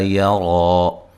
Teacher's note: یا را کو موٹا ادا کریں گے، ایک الف کی مقدار کے برابر لمبا کریں گے